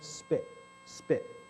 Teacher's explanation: feel how you have almost no puff against your hand